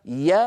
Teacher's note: انقطع صوت الغنه المطوله لما بدي يقول يا تبع يعمل يا هذه الياء تخرج ولا يصاحبها غنه